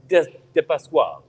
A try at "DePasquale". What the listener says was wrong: Depasquale. I say a Depasquale. Yeah, a little different E. Depasquale. Depasquale.